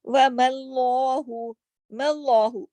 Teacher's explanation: अल्लाह के नाम को मोटा किया मीम के जबर की वजह से, लाम जलाला हुआ है यहाँ पर।